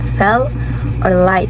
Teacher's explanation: blocking the center of the mouth but letting air pass along the sides of the tongue, which is giblock ang tunga sa ang center giblock, but sa gilid is makapas gihapon ang air, which is maka-produce paghihapon og sound. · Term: lateral